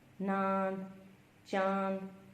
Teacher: इसके उच्चारण के समय हवा नाक तथा मुख दोनों से बाहर निकलती है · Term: अनुनासिक